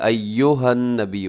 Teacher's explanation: ایو ہونٹ آپ کے گول ہو جائیں پیش پر